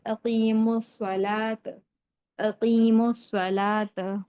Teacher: نہیں ہے نا، اس لیے واو کو بھی نہیں پڑھیں گے، تو میم کو ڈائریکٹ سواد کے ساتھ ملا کر پڑھیں گے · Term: حروف شمسی